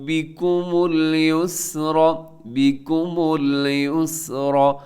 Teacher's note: یسرا میں را آپ نے موٹی پڑھنی ہے، سین کو ہلانا نہیں ہے